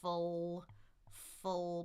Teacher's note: We've done the dark L. Tongue in the back. Full full. My tongue is already in the back for that horseshoe.